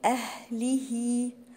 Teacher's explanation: أهله، حرف الهاء هنا من حروف الهمس، وخلي بالي إن حرف الهاء في القرآن دايما بيبقى ضعيف، فأقول أهله، وبعد الهاء المكسورة دي في وراها علامة كده، دي اسمها، ده مد طبيعي صلة صغرى بتمد حركتين